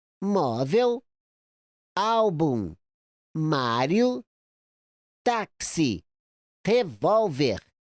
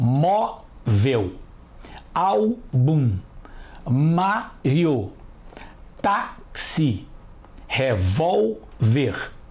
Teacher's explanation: a sílaba forte de todas as palavras é a penúltima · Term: paroxítonas